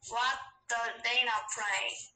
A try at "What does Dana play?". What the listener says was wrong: 저, 봐봐, 또 R 소리 넣는다.